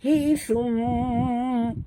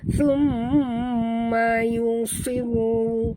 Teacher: Alai, ya sifatnya lin lembut. Hi thum, dengung pada mim bertasydid wajibal gunah.